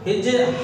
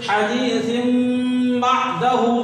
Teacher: بدلنے کا نامی اقلاب ہے اور تنوین کی آواز جو ہے وہ حذف ہو کے میم کی آواز نکلے گی